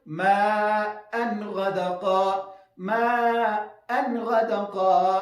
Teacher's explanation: نه به وقف ورباندې کوو او نه به زیاتوب د غنې پکې کوو. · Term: اظهار